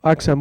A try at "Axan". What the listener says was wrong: Se pronuncia Ashan, como si la X fuera una SH, es náhuatl.